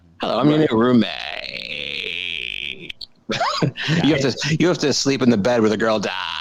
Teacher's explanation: She had that vocal fry.